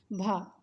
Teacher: स्पर्श होना चाहिए, स्पर्शी, घोष, महाप्राण और ओष्ठ व्यंजन होना चाहिए